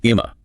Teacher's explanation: And then in really casual fast speech, especially in some American dialects, that becomes imma. the G and the T are just completely gone. So if you're not prepared for someone to say, "Eim, get a coffee." You will completely miss what they intend to do.